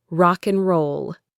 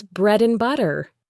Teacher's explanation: In a phrase like rock and roll, we don't say rock and roll. The D disappears and it becomes rock and roll.